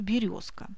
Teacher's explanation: Звонкие согласные произносятся нечетко, если они находятся на конце слова, как, например, в слове «паровоз». Происходит оглушение звонкого согласного. Оглушение звонкого согласного происходит и в позиции перед глухим согласным